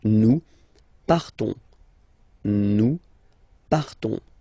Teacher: So classic ending ONS, you don't pronounce the S, you just have this on sound nasal.